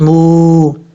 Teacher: واو ساکن سے پہلے پیش ہو تو واو مدہ ہوگا، ایک الف کی مقدار اس کو لمبا کر کے پڑھیں گے